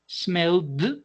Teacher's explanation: These three sounds generate vibration. Therefore, the past form also needs to have a sound that generates vibration. And this sound is going to be provided by the sound of d, d.